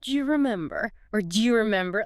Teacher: do you very frequently reduces and links together to sound almost like Jew or maybe Jew.